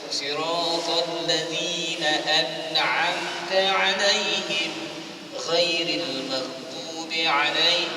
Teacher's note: bunyikan ain ya, jangan sampai huruf ain yang selepas ghairil maghdub itu terabai huruf ain